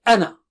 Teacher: أَنَا۠ Here, whenever أَنَا۠ comes in between, like here, and you're reciting continuously, then you don't say أَنَا۠, just say أَنَ, okay, just say أَنَ, you don't pronounce that madd